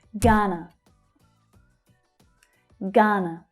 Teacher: The first syllable is stressed, the second one unstressed.